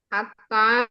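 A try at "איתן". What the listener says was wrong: Bukan ini bukan Atan, ini bukan Atan, Etan. Ini Etan.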